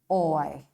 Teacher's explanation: the first vowel glides onto the second vowel, forming a single syllable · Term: Diphthongs